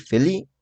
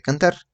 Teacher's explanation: un niño que omite las últimas consonantes puede decir felí en lugar de feliz y canta en lugar de cantar